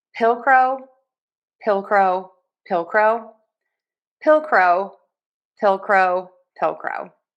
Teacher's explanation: for pillcrow, we are going to stress syllable number one, pill, and then end with crow.